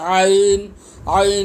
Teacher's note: عین کی ادائیگی حلق سے ہوگی